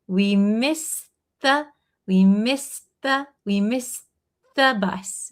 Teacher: So if it's a t sound plus the th sound, they're going to kind of link together.